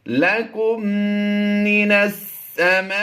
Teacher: मीम साकिन के बाद दूसरी मीम आ जाए तो वहाँ पर उसे मुशद्दिद पढ़ा जाता है और गुन्ना करके पढ़ते हैं। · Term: इदगाम शफ़ी